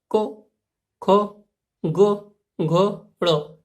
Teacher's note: क वर्ग के जितने भी व्यंजन हैं, इनका जब उच्चारण किया जाता है तो हवा का प्रेशर कंठ पे पड़ता है। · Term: कंठ्य व्यंजन